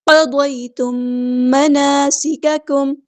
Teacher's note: میم ساکن کے بعد میم آیا، ادغام شفوی ہو رہا ہے، 2 کاؤنٹ یعنی 2 حرکت ہم نے یہاں پہ رکنا ہے